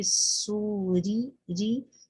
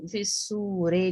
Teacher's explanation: رو کے اوپر کسرہ ہے، کسرے کی صورت میں رو باریک پڑی جاتی ہے، فسوری ری ای بی ٹی سی، یعنی بٹ اتنی شارپ اس کو کرنا ہے، اس کو فسورے نہیں پڑھنا ہے، ٹھیک ہے۔